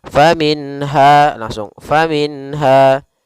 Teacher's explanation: ha termasuk salah satu huruf yang dikeluarkan dari tenggorokan kita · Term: izhar halqi